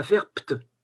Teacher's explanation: le B va devenir P et ça va faire pt. C'est automatique, vous ne pouvez pas contrôler.